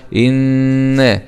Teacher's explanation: نون شدة فتحة مع الغنة